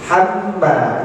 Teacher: Ini hamma, ini ada tasdid, mim yang ditasdid, berarti ditahan 2 harokat